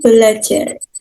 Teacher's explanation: Misal, dalam pengimbuhan prefiks ber pada dasar ajar, terjadi perubahan bunyi di mana fonem R berubah menjadi fonem L. Ber plus ajar menjadi belajar. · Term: perubahan fonem